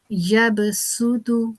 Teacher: सीन की जो सीटी की आवाज है जो एक सीन का अपना जो मखर है उसको हम अदा करेंगे स्वाद की गोलाई के साथ हम इसको नहीं अदा करेंगे